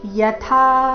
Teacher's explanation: यथा था महाप्राण दीर्घ